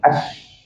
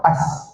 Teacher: Guna tengah lidah. Tengah lidah, sipi-sipi nak kena langit-langit atas. Itu makhraj huruf shin.